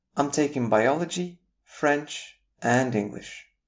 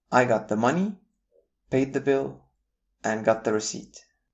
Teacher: Our next pattern of intonation is what we call series of words intonation. We use a rising tone for each listed item until we've reached the last item of a series.